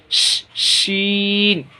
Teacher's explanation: ये बड़ी शीन है, शीटी वाली शीन। ये शीटी इसी तरह निकलता है ना, कुकर की शीटी इस तरह बचती है, वैसे ही प्रैक्टिस के ज़रिए से निकलेगा ये।